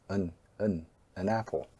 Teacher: another feature of connected speech is the reduced vowel sounds, that is, the schwa sound